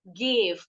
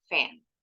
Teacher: Perbedaan antara V dengan F itu pita suara kita bergetar. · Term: voice consonant sound